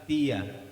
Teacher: Ketika melafazkan ya, gunnahnya ditinggal.